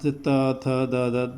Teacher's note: जब त बोलते हैं तो आपकी जीभ दांत से टकराती है। देखिए दांत, त थ द, दांत से अगर जीभ नहीं टकराएगी तो त बोला नहीं जाएगा, इसलिए इनको दंत, इनका स्थान दंत होता है, इनको दंत कहा जाता है।